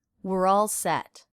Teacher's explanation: reduction of we're to were